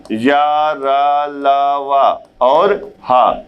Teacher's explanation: अंतस्थ व्यंजन या, रा, ला, वा और हा ये भी क्या हो गया, सघोष हो गया।